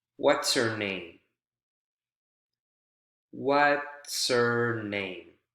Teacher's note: all together it sounds like one word because we're connecting consonant sounds with one word to the consonant sounds of another word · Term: linking